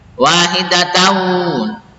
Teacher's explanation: Tanwin fathahnya dimasukkan kepada huruf wawu, didengungkan.